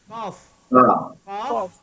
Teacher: pangkal lidah naik ke atas